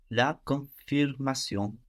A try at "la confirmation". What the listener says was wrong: And we have less N, no? On both of those ends, a lot less N. And also not pronouncing that N kind of keeps the vowel in a different place in the mouth, which is much more French. So also we will notice we will pronounce more French vowels if we don't pronounce those N's.